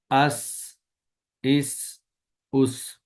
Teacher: سین کی آواز سیٹی کے ساتھ آئے گی، ادائیگی کے وقت زبان کی نوک کو سامنے والے نیچے کے دو دانتوں کے کناروں سے مضبوطی سے لگائیں